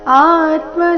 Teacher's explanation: ಆ ದೀರ್ಘ ಬಂದು ಸೌಮ್ಯ ಆಘಾತ